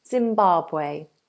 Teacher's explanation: We have a nice open long vowel.